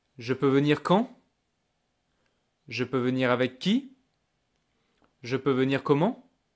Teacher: Always going up at the end.